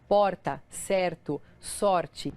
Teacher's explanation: O pessoal de São Paulo, capital, Curitiba e boa parte dos gaúchos faz o R com a ponta da língua. Esse som de R é feito com a ponta da língua vibrando.